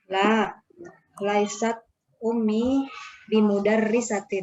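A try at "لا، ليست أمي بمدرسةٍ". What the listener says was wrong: Masya Allah,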